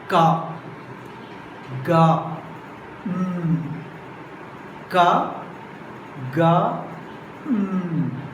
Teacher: Ka, ga, ka, ga, So while producing these three sounds, back of the tongue raised towards and touching the soft palate. That's why these three sounds are called velar.